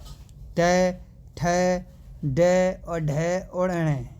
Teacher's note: मुंह के भीतर की छत को जो अगला भाग है वहां से बोले जा रहे हैं। और इनको जो मतलब कि जो वर्ण होगा दोस्तों वो मूर्धन्य बोला जाएगा भाई। · मुंह के भीतर की जो छत है उसका जो अगला भाग है दोस्तों वहाँ से बोले जाते हैं भाई